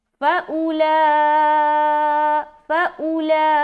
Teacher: हमज़ा पेश ऊ पढ़ना, शॉर्ट साउंड बनाएंगे, ठीक है, बगैर खींचे